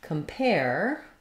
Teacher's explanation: when we look at the word compare the stress falls on the pair syllable so letters AR say the air diphthong just like in air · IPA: /kəmˈper/